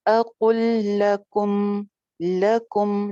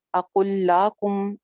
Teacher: پچھلے لام کو نہ پڑھتے ہوئے اگلے لام کو 2 مرتبہ پڑھ رہے ہیں. اقل لکم، لکم، لاکم نہیں بولا میں نے، اقل لاکم، اقل لکم، کم میم کو جما کے. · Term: ادغام